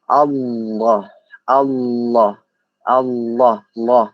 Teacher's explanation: Nah, hukum bacaan Allah. Allah itu tafkhim. Tafkhim artinya tebal. Nah, makanya huruf lam di sini kita baca tebal.